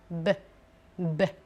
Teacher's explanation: La prononciation bilabiale, qui implique les deux lèvres. Bi, ça vient de deux, labial, des lèvres.